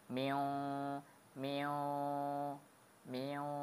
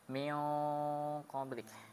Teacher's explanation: Nah, kalau ketemu qaf gunanya tebal. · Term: ikhfa